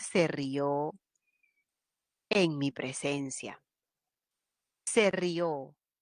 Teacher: la mayor fuerza de voz está en la vocal abierta